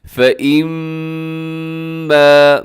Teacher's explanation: میم مشدد ہے، یہاں پر آپ نے غنہ کرنا ہے اور اس کو لمبا کرنا ہے کیونکہ الف بھی ساتھ ہے